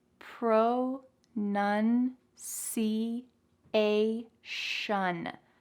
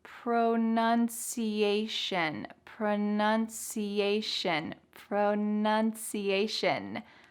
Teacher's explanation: that t-i-o-n is gonna sound like an s-h shun